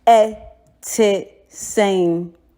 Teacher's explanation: as I always tell you, it goes down. It's short vowel. No, it doesn't go long.